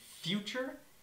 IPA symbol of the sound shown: f